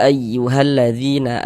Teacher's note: Karena di sini ada huruf ya sukun sebelah sininya nih ada harakat kasrah ini ya. Maka ini huruf yang memiliki harakat kasrah dibaca panjang sehingganya dzi dibaca panjang